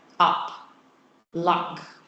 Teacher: you've got another vowel here the upside down one like this that's a back vowel in English it's kind of like an A but it's the vowel in words like up luck